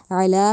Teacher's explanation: अला पे जो आइन है उसको हलक से निकालना है, अला नहीं कहना, ठीक है।